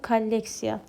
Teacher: əgər vurğu O-dan sonraki hecaya düşərsə, O bu zaman A kimi tələffüz olunmalıdır